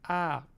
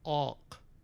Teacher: So instead of having A, if you have a uvular next to it, sometimes it'll be pulled back because all that action is happening in the back of the mouth with the K or the H.